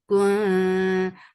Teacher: This ikhfa is light, because ta is among light letters, and go to your tongue should be very close to the makhraj of ta.